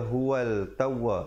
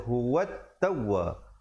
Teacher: Huwat, waw baris atas terus naik di atas ta. Di situ alif lam syamsiah, lamnya tidak dibunyikan. Jangan baca huwal tawwa, dia kena baca huwat tawwa.